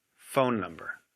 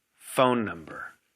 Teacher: the first word sounds stronger listen to the stress phone number the stressed syllable is extra long · in a two-word pair we stress the first word the first word sounds stronger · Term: stress in two-word pairs